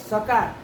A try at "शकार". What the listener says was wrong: अरे दंत्य निकल रहा है, कहाँ वेद पढ़ते हो भाई तुम? सकार, दंती सकार बोल रहा है तो मंत्र का तो अनर्थ हो जाता होगा फिर।